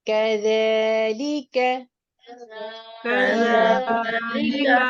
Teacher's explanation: दाल की अदायगी में जुबान की नोक ऊपर के सामने के दांतों के सिरों से लगेगी।